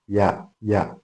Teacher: നമ്മുടെ നാവിന്റെ മധ്യഭാഗം അത് മുകളിൽ അണ്ണാക്കിലോട്ട് അടുക്കുമ്പോൾ, തട്ടണമെന്നില്ല, അടുക്കുമ്പോഴാണ് യാ ഉണ്ടാകുക.